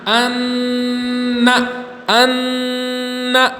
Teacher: جیسے حمزہ نون زبر ان، نون زبر نہ، ان، ان. جو نون کی آواز ہے ان، اس کو ناک میں ایک الف کی مقدار لینا ہے، ناک میں آواز کو لے جانا ہے، اسی کو غنہ کہتے ہیں، غنہ۔